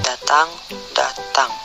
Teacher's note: Konsonan D, bunyi apikoalveolar hambat bersuara, contoh kata datang, datang.